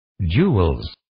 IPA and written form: dʒulz (Jules)